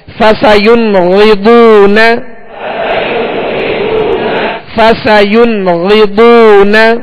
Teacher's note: غین اور بہت دونوں کو پر پڑھیں گے, یعنی موٹا پڑھیں گے, اس لیے کہ یہ حروف مستعلیہ میں سے ہے.